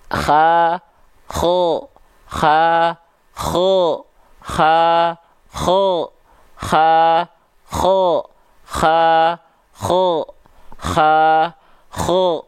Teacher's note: bibir kita enggak berubah cuman dalamnya doang Beda pangkal lidahnya